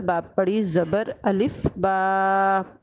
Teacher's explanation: الف مدہ کی تعریف یہی ہے کہ جب بھی کسی حرف پر پڑی زبر آ جائے اور اس کے بعد الف آ جائے تو اسے الف مدہ کہتے ہیں، اور اسے کھڑی زبر کی طرح دو الفات کے برابر کھینچ کے پڑھتے ہیں